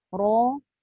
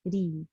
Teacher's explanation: Pangkal tu dia ternaik sikit ke atas menyebabkan sebutan ra itu tebal. Tetapi bila pangkal lidah itu turun dan dia mendatar ke bawah sedikit berbanding dengan tafkhim tadi, maka dia akan jadi nipis bunyi dia